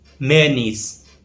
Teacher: in American English, the stress falls on the first part of the word